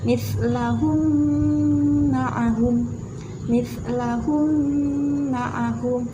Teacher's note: Cara membacanya adalah seperti menyuarakan mim merangkap atau mimnya ditasydidkan. Ada mimnya double. Nah, wajib dibaca dengung. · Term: idgham mimi